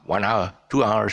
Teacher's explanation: so uh we don't pronounce the uh aspirate when we come across this word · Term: silent h